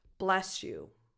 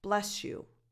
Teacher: In some cases, you almost hear a sh sound in there. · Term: coalescence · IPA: [ʃ]